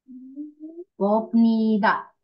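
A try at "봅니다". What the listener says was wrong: Bom, bomnida. Bacanya bomnida. pakai M. Bomnida.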